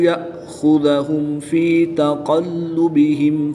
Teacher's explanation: حمزہ ساکن کو ہمیشہ جھٹکا دے کر پڑھتے ہیں تو ہم یہاں پر جھٹکا دے کر پڑھیں گے۔ خا اور قاف حروف مستعلیہ میں سے ہیں، ان کو پر یعنی موٹا پڑھیں گے۔ میم ساکن کے بعد حرف با ہے تو یہاں پر اخفاء شفوی ہوگا، غنہ زمانی کر کے پڑھیں گے۔